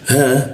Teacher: tenggorokan bagian bawah di huruf ha. Tebal ya